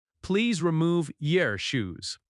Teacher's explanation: In natural American speech, your often reduces to yer.